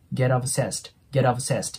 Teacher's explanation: get▁の▁t▁の次に母音が来てるんで、先ほどと同じように▁t▁はラ行の音になります